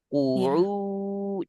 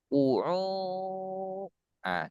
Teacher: Ketika mengucapkan qaf dan ain, suara harus sama. Manakala kita sedang di ain dan suara mengecil, berarti ada ke hidung saat mengucapkan ain.